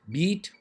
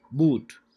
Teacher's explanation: beat front part and boot back part of your tongue is involved in the production of these